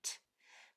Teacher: T is only air no voice no voice box is used it's just a spitting sound